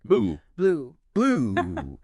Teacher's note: That often indicates length in IPA. For you, your lips are definitely rounded, quite tense, almost like you're whistling. Tongue is high and back.